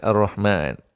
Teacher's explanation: Ra ni kena baca tebal kerana sebelumnya berbaris atas kata Hamzah wasal automatik kena baca tebal.